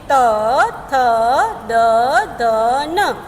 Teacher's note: इसे जब भी आप पढ़ेंगे तो आपकी जो जीवा है वो आपके दांतों को छू लेगी, आपकी जो जीवा है वह आपके जो दांत है उसको छुएगी